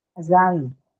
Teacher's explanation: the first one is a schwa sound. It cannot take a stress on itself